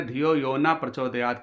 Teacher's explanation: नः ना बोल कर के विसर्ग न लगा कर के ना पे केवल ना बोल दिया